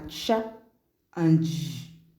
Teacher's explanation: the africat the two sounds under africat are cha and J in this production of the sounds we have obstruction in the air stream but the sounds are produced with gradual release of air as opposed to the forceful release of air in the case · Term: affricates